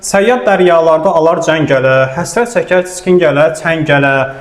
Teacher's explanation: Dodaq dəyməz təznisdə isə təznis nümunəsində MBP samitləri iştirak eləmir, dodaqlar dəymir. Çünki biz samitimizdə dodaqları axı birləşdiririk.